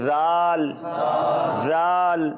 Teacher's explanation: جس طرح ثا پڑھا تھا نا اسی طرح ذال پڑھیں گے. زال نہیں پڑھیں گے، زا کی آواز نہیں آئے گی بلکہ پڑھیں گے ذال ذال.